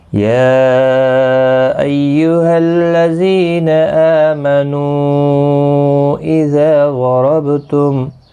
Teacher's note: یا یہاں پر چھوٹی مد ہے، مد منفصل، تین الف کی مقدار کے برابر کھینچ کر پڑھیں گے